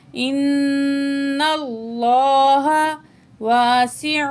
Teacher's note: حمزہ زیر نون ان، نون زبر لام نل، نل نون پہ غنہ کریں گے مشدد کی وجہ سے، لام کی زبر کو لام سے ملا کے پڑھیں گے.